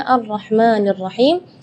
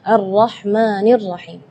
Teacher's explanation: tidak boleh lebih madnya dari dua harakatnya